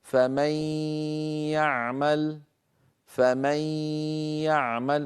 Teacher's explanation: ادغم النون في الياء فتحول جزئها اللساني الى ياء اما جزء جزء النون خيشومي وهو الغنه بقي موجودا بل طولنا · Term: غنه كامله, الغنة